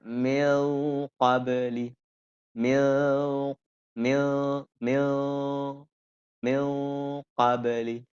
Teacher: lebih dekat dengan ikhar, akan tetapi dengan menebalkan dengung, karena qaf bagian dari huruf tebal.